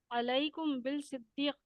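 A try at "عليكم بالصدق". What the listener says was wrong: بل نہیں، با کو سواد سے ملا دیجیے.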